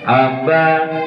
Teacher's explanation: ba itu cara membunyikannya bertemunya kedua bibir. Kedua bibir ini yang bertemu adalah yang bagian dalam yang basah.